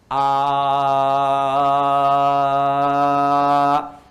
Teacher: kalau huruf hamzah, a dengan h itu satu makhraj, yaitu bagian kerongkongan bagian bawah di sini. Sini nih, sini bagian bawah.